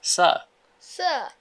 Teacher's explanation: স্যারের রটা ব্রিটিশ ইংলিশে কি হয়ে যায়? সাইলেন্ট হয়ে যায়।